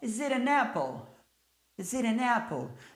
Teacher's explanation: Emenda o S com a vogal. O T vai passar a ter som de R porque está entre vogais.